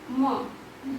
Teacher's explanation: नासिका मुख और नासिका से उसमें ध्वनि उत्पन्न होती है, इसलिए उसको अनुनासिक भी कहते हैं